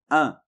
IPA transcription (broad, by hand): ɛ̃